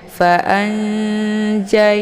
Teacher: nunnya disamarkan kemudian siap-siap masuk mau masuk ke huruf Jim · tingkat kesamaran dan dengungan itu seimbang atau setara ya karena makhraj Nun dengan makhraj Jim itu tidak terlalu dekat juga tidak terlalu jauh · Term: Ikhfa ausad, Ikhfa